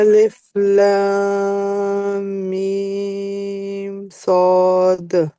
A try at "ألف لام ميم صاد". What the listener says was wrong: शाबाश। बस दाल पे ना दबाए नहीं, द नहीं करें।